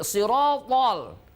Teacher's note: Benar-benar tidak boleh mengeluarkan udara. Tidak ada desis dalam huruf to. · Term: huruf jahar